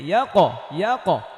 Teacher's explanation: কফ যেহেতু মোটা হরফ এই জন্য এটা জবরের মতো উচ্চারণ হবে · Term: কলকলা